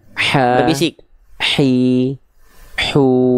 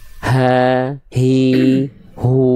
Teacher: H kecil itu Bunda dilafalkan dari tengah tenggorokan